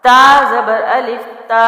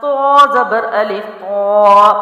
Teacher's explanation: اب تا جو ہے باریک ہے، تو موٹا ہے، لیکن آوازیں مل رہی ہیں، حرف مختلف ہے اور ان کا مخرج میں مختلف ہے.